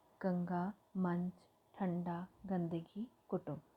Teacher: इसके उच्चारण करते वक्त हवा केवल नाक से निकलती है। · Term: अनुस्वार